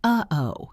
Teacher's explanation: a sound that is made by stopping the air in your throat. · That little catch in your throat is a glottal stop.